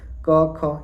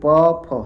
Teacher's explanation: स्वर तंत्रियों में कंपन नहीं होता है। वाइब्रेशन नहीं होता है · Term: अघोष